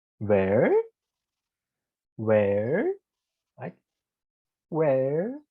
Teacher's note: for the falling and rising, we start from the top, we go down, and we go up again